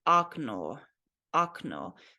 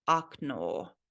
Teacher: when O is not emphasized, it is pronounced more like ah